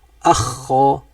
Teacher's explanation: Manakala adnal halqi yang paling atas pula keluar daripadanya ghin dan kha. Dia akan rapat ke bawah atas ni.